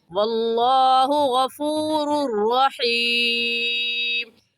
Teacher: इस तनवीन पर गुन्ना नहीं करेंगे क्योंकि तनवीन के बाद हुरूफ यरमलून में से रा आ गया है। तनवीन के बाद हुरूफ यरमलून में से रा या लाम आ जाए तो उस तनवीन पर गुन्ना नहीं करते, तो यहाँ पर हम गुन्ना नहीं करेंगे, जल्दी से पढ़ जाएंगे वल्लाहु गफूरुर रहीम।